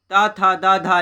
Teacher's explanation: दंत व्यंजन ता था दा धा ये सब हैं